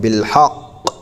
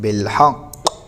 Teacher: یہاں پر حرکت کو بالکل ظاہر نہیں کرنا ہے اور مشدد حرف کو باقی رکھنا ہے، یعنی تشدید اس کی باقی رکھنا.